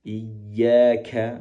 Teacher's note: Pastikan kaf di sini tidak dihamaskan.